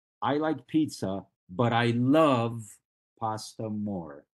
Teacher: if you like pizza but you love pasta you can overemphasize the word pasta